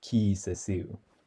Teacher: that first long vowel is heightened because there's a high vowel later on in that word